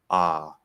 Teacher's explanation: It almost doesn't, it kind of doesn't seem like ah anymore, but I'm not doing anything except opening that nasal flap. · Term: nasalize